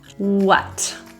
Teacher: The WH words in English are pronounced as a W, with no airflow